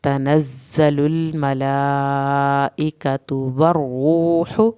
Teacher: را کو پر بھی کرنا ہے، را کی شد بھی آپ نے پڑھنی ہے، ہا کی پیش کو لمبا نہیں کرنا۔